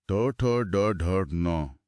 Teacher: यह वास्तव में एक भौतिक झटका है। ट बोलते समय जीभ एकदम पीछे की तरफ मुड़कर कठोर छत पर प्रहार करती है। यह तालव्य वाले च के सपाट टकराव से बिल्कुल अलग तरह का घर्षण है। · हमारी क्रमबद्ध ट्रिक में च वर्ग के बाद अब ट वर्ग का नंबर है। तो ट वर्ग मूर्धा से बोला जाएगा। · जब जीभ की नोक थोड़ा पीछे की ओर मुड़कर मुंह की छत के इस कठोर अगले हिस्से को तेजी से छूती है तो जो ध्वनियां पैदा होती हैं वो मूर्धन्य कहलाती हैं।